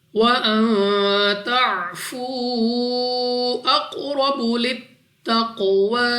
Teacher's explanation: نون ساکن کے بعد تا حروف اخفا میں سے ہے، غنہ کر کے پڑھیں گے۔ واو ساکن سے پہلے پیش واو مدہ ہے، مگر اس کے اوپر ہے مد، تو اس کو 2 نہیں بلکہ 3 یا 4 سیکنڈ تک کھینچنا ہوگا۔